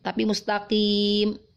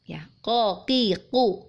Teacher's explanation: Karena kita fahami bahwa huruf qaf dia memiliki sifat qalqalah saat dalam kondisi sukun. Saat dia hidup, maka huruf qaf ini dia tidak memiliki sifat qalqalah. Maka hati-hati kita tidak membaca huruf qaf dalam kondisi hidup dengan menelan, seolah-olah menelan suaranya dengan tujuan memantulkan huruf qaf.